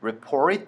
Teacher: 아니면 papw이라고 얘기하는 걸 많이 보실 수가 있을 거예요 그래서 t report 할 때 Port 에다 강세 찍어 주기